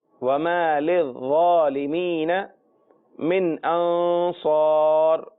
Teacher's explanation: من میں جو پہلا نون ہے وہاں غنہ نہیں کرنا، اور انصار کے اندر جو دوسرا نون ہے وہاں غنہ کرنا ہے۔